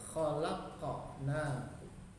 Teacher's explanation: Khalaqnakum, ada huruf qa, sukun di situ. Karena di tengah kata namanya qalqalah sugro, pantulannya kecil.